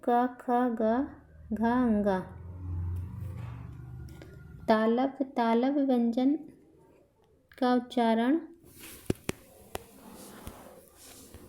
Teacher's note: इन व्यंजनों कंठ से देखिए, इन व्यंजनों का उच्चारण गले से होता है